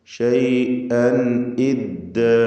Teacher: തൻവീനും ശേഷം ഹംസയുമാണ്, ഇൽഹാർ ഹൽഖി നൽകി മണിക്കാതെ വെളിവാക്കുക.